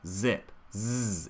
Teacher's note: But go ahead and allow, especially in a beginning part of a word, that Z to have a little bit more zing, to have a little bit more time · make sure we don't cut out that zzz, that voiced quality from that consonant sound.